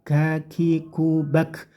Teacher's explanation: kafnya, hati-hati, kafnya dikasih angin sedikit